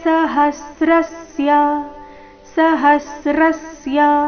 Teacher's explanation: ಹ ಮತ್ತೆ ಶ್ರ ಮೇಲೆ ಆಘಾತ